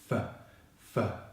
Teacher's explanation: the unvoiced /f/ consonant sound, which we make by placing our top teeth onto our bottom lip and blowing like so